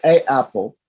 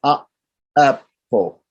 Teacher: So if I say a apple, it sort of doesn't flow. There's a apple. I have to make a break there.